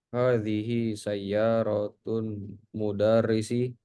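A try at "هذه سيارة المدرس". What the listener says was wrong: Ya, sayyaratul ya, disambung sayyaratul mudarrisi.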